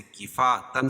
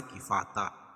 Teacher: کفاتا الف مدہ اور 2 زبر کی تنوین پر وقف کی صورت میں ایک زبر کے قائم مقام الف پڑھیں گے اور دوسری زبر اپنی حالت پر باقی رہے گی، جیسے کفاتن سے کفاتا.